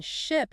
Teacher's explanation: the vowel sound in ship is produced with your tongue lower and more central in your mouth